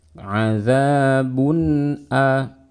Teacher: Dibaca dengan nun yang jelas, dan karena nun bersifat gunnah berikan sedikit gunnahnya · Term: izhar halqi